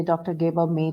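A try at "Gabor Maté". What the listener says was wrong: It's actually Dr. I think she forgot to use that stress on the E. It's actually Dr. Gabor Mate.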